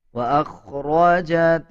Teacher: اذا زلزلت الارض زلزالها واخرجت الارض اثقالها، واخرجت حمزہ کو خوا کے ساتھ ملا کے پڑھا جائے گا۔ خوا موٹے حروف میں سے آتا ہے، خوا کو پر یعنی موٹا پڑھا جائے گا۔